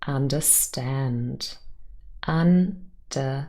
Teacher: the third syllable stand consists of just one vowel, of course, but 4 consonant sounds. So it's quite a lot of sounds, but still they only form 1 syllable.